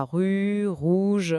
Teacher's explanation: Le guide doit insister sur le fait que ça vient du fond de la gorge. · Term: le fameux R